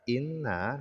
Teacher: Nun yang bertasdid maka didengungkan jadi setiap Nun dan mim yang bertasdid didengungkan ya diunahkan kadar